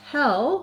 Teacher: when we look at hell, we just have the lax vowel, the red tent vowel